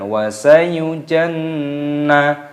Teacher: Di sini nunnya tasdid ini dimasukkan, ditekan, di gunnah. Hukumnya gunnah itu berdengung, dimasukkan dan didengungkan.